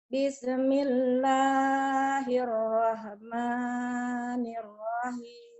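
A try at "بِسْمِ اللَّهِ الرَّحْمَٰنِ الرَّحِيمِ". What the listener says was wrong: Hati-hati jangan bisa. Ada huruf mati penyakit. Bismillahirrahmanirrahim. Ayo jangan ada e-nya, ayo. Bismillah.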